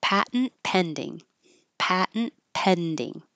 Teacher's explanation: these two T's change to a d and you will release the D and hear it so it sounds like pattern and pattern du you won't hear